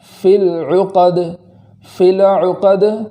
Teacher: العقد کے اندر لام پر جزم ہے، تو اس لام کو متحرک ہو جانے سے بچانا ہے، اس کو اس طریقے سے پڑھیں گے فِي الْعُقَدِ، فِي الْعُقَدِ، زبر ہو جانے سے بچنا ہے، جیسے فِي الْعُقَدِ، اس طریقے سے نہیں پڑھیں گے، اس کو اس طریقے سے پڑھیں گے فِي الْعُقَدِ وَمِن شَرِّ النَّفَّاثَاتِ فِي الْعُقَدِ۔